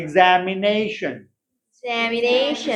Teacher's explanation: तो नई जो सिलेबल है वो स्ट्रॉन्गेस्ट है और जै जो है वो सेकंड स्ट्रॉन्गेस्ट है